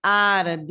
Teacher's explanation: sílaba mais forte é no ar inclusive ela já está pé acentuada né Então olha só antepenúltima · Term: sílaba tônica